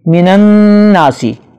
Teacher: نون پہ شد ہے لہذا اس پہ غنہ ہوگا۔